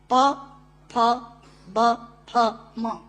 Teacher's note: प, फ, ब, फ, म दोनों होंठ मिलाकर बोले जा सकते हैं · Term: ओष्ठांग